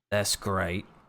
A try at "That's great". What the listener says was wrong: You need like 14 more R's in there.